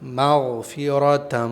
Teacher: غین یہاں پر اچھی طرح ادا ہونا چاہیے، ایسا نہ ہو گاف ادا ہو جائے۔ گاف کی آواز ہوتی ہے مغفرۃ، غین کی آواز ہوتی ہے مغفرۃ۔